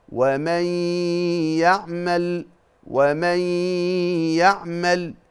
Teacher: بتخش على طول على حرف الياء مع الغنه اللي هي مخرجها الخيشوم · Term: ادغام بغنه